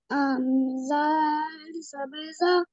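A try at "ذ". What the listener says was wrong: Za. Not zal. It is za. Za zabar za.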